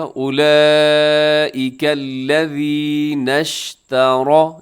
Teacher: را کے اوپر زبر ہے، را موٹی پڑھی جائے گی